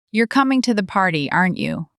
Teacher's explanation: Voice rises. This means you genuinely don't know and you need an answer.